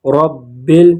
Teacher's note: یہاں پر را پر فتحہ ہے، زبر ہے، تو اس کو پر پڑھیں گے رب، اور با مشدد ہے، اس کو شد کے مشدد پڑھیں